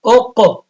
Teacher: اب قاف پہ قلقلہ ہوگا کیونکہ قاف ساکن